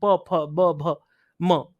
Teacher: हवा धक्के से जो है वो आप लोगों को एकदम हाथ में महसूस होगी